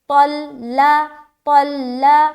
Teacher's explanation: لام کو بالکل بھی موٹا نہیں کریں گے